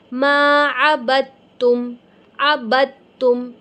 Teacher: میری با اور تا میں آواز مل رہی ہے